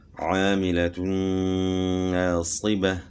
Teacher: 2 پیش کی تنوین کے بعد حروف یرملون میں سے نون آ گیا تو یہاں ادغام مع الغنہ ہو گیا